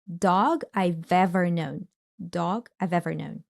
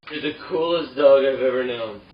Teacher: I have is reduced to just I've, and this V sound from what is left from have, you remember, right? It gets linked to the word ever. So we hear dog I've ever known.